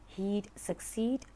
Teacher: the long E sound is repeated